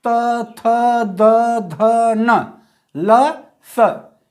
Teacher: तो दंत मतलब दांत से, ठीक, दांत से बोले जाने वाले वर्ण। जिह्वा दांत से टकराती है। देखिए, त वर्ग में त, थ, द, ध, न, ल, स, ये सभी जो है दंत कहलाएंगे, ठीक, क्योंकि ये इनका उच्चारण स्थान दंत है, ठीक।